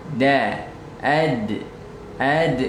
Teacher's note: dia memiliki sifat Qalqalah pantulan